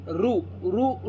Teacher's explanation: कळलं तुम्हाला मूर्धा म्हणजे हे वरचा भाग ताळूचा मूर्धेला जाऊन लागतो जे वर्णन उच्चारताना आपल्या जिभेचा शेंडा मुरदेला जाऊन लागतो त्यांना म्हणायचं मूर्धन्य वर्ण